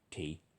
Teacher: T is d but no voicing